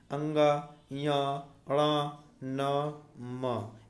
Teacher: जिनके उच्चारण में हवा का प्रमुख अंश नाक से निकलता है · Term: नासिक के व्यंजन